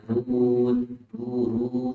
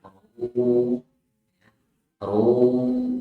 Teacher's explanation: Ro dhamma dibaca tebal. Ro bukan ru tapi ru.